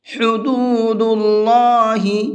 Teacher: ہا کو حلق سے نکال کر کے پڑھیں گے